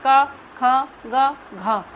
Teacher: बोलिए क ख ग घ आपको कंठ से आवाज आ रही है